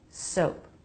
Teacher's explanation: A light release of the P.